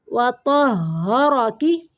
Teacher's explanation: ہاں مشدد ہے، تو کو ہاں کے ساتھ تھوڑی دیر ملائیں گے